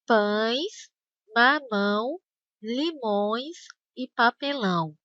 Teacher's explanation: ao dizer essas palavras, o ar precisa sair também pelo nariz. Por isso, esses ditongos são chamados de ditongos nasais.